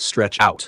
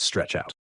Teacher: When a compound word functions as a phrasal verb, the stress usually falls on the particle, the adverb, not on the main verb. So in stretch out, the stress is on out, not on stretch.